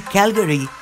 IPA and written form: ˈkælɡri (Calgary)